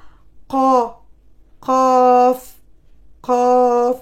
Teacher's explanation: Alors, le fond de la gorge se colle à la partie molle du palais en disant qaf, qaf, qaf